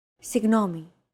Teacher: signomi this character isn't pronounced using English G sound at all it's like a very soft continuous and loosely held G almost as if you're gargling but don't make it sound too throaty · your tongue and the back part of your mouth should be barely separated from each other while you blow a steady stream of air